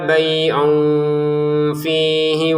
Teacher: tanwin bertemu fa dibaca dengan samar. Fihi langsung ke wunya ya.